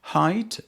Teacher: height begins with a voiceless glottal fricative, articulated at the glottis without contact between active and passive articulators.